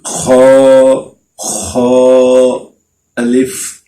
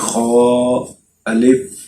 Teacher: حلق کے اوپر والے حصے سے ہم پڑھیں گے